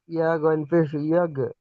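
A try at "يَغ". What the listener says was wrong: পেশ না যাবার, ইয়া গইন যাবার ইয়া গো।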